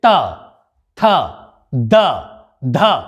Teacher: दांतों की सहायता से, जैसे हम बोले त, थ, द, ध, तो हमारी जीभ हमारे दांतों को टच कर रही है।